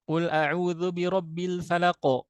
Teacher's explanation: Qaf di pangkal lidah, aqsa lisan.